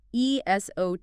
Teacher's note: 4 syllables, stress on the third.